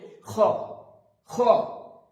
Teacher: উপরের তালুর সাথে জিভের লাস্ট অংশ লাগিয়ে উচ্চারিত খরখরে একটা শব্দ হবে খ, খ। এটা জন্য একদম খ হয়ে না যায়, এটা হবে খ।